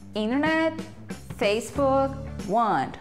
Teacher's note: observe que as consoantes T e K, nos sons a gente fala k e t, são bem curtas